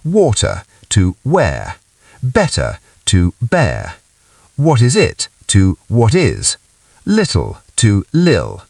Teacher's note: British speakers often use T glottalization, replacing T with a quick glottal stop, a little throat catch in the middle or at the end of words